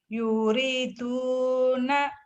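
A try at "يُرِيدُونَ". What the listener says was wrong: yuriduna salah salah salah yuriduna dunya panjang Pak.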